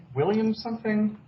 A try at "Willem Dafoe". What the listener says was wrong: Kind of. You're close. Get rid of a syllable.